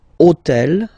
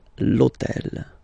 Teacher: this hôtel, okay, because it starts with H, but remember that in French we don't pronounce H, okay, so basically the first sound of the word is the vowel O , okay, so for the same reason, E needs to disappear,